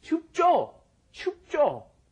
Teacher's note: normally when Koreans say it it's kind of a hard J